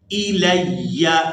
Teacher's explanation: لام کو یا مشدد کے ساتھ ملاتے ہوئے سختی کے ساتھ ادا کرنا ہے. الی لام یا زبر لیا زبر یا لیا.